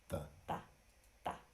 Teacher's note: you keep that tongue nice and front, in the front, behind the top front teeth. Ta. It's a much softer sound than the T we may normally speak in English, which is like a ta like T or Tom.